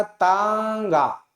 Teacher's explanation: मुख से भी वायु बाहर निकलेगी और नाक से भी, दोनों एक साथ में प्रयोग किए जाते हैं। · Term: अनुनासिक